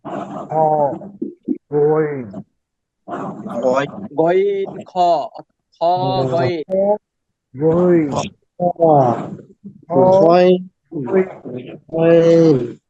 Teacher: হলকের শেষ হইতে উচ্চারিত হয় গইন খ